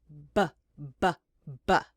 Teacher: The only difference is you use your voice when you make the b, b, b.